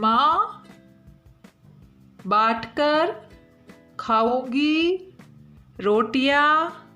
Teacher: इन शब्दों का उच्चारण या तो नाक से होता है या फिर नाक और मुंह दोनों से होता है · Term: अनुनासिक